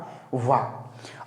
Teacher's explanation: एक वर्ण बचा आपका वा, और वा का उच्चारण जो होता है वो ओष्ठ और दंत दोनों से मिलकर होता है, इसीलिए हमने उच्चारण स्थान लिखा है दंतोष्ठ।